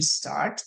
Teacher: the final sound in start is T and this is unvoiced